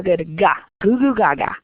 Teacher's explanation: you can feel that your tongue is pushed up towards a little uvula dangling back there